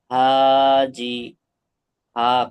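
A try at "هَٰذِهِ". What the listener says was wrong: তারপরটা এটা তাড়াতাড়ি পড়বেন, হাজিহি। এই জি হি হয়ে যাচ্ছে, জিটা টানেন। জি, কিন্তু হাটা টান ঠিক আছে, হা তো টান হবে। আলিম মাদ্দা নয়, আলিম মাদ্দার সমতুল্য।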